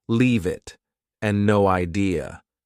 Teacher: Both sound like they have no spaces between the words.